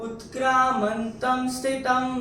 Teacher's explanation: यहां पे त के ऊपर जो अनुस्वार है उसके बाद का अक्षर है स। अनुस्वार के बाद अगर स आता है तो अनुस्वार का उच्चारण होता है म।